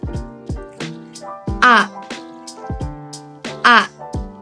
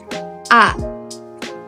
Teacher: bunyi vokal A dihasilkan dengan lidah di posisi tengah, bibir tidak bulat dan mulut terbuka lebar